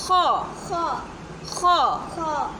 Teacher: حلق کے اوپر والے حصے سے ادا ہوتا ہے